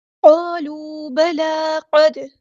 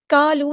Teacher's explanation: قاف ہمارا heavy letter ہے، پورا ادا کریں گے، فل ماؤتھ لیٹر ہے۔ کالو نہیں پڑھنا، قالو الف مد آ گیا ہے تو مد اصلی کریں گے، ایک الف کے برابر لمبا کریں گے، اس الف کو پورا ادا کرنا ہے، ٹھیک ہے۔